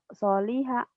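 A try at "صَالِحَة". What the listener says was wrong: So-nya panjang. Soliha.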